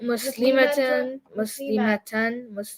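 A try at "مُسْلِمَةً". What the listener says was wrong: See, the ma was too long?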